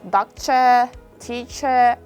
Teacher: at the end of the word r is not pronounced like doctor teacher